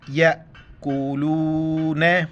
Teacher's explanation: حمزہ ساکن ہے جھٹکے کے ساتھ